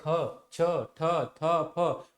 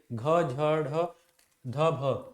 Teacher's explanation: छ ठ थ फ और चौथे घ झ ढ ध भ वर्णों को महाप्राण कहा जाता है क्योंकि इनके उच्चारण में अधिक श्वास का प्रयोग होता